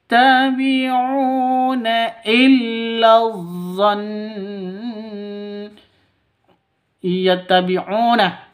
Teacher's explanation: ya nun mim wawuh ya yattabiuna illon yattabiuna u panjang dua ketukan karena ada wau mati diawali dengan dhammah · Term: mad asli